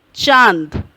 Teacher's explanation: चांद, अ के साथ ही अनुनासिक नासिका का प्रयोग किया जा रहा है